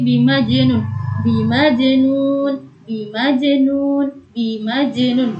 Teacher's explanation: qalqalah memantul yang cara memantulkannya dengan ringan saja, memantul dengan ringan. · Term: qalqalah sugro